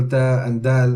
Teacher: when we're saying, for example, da and dal, we are going all the way to the front of the mouth where the teeth are joining onto the gums. However, the Ra is slightly behind that area.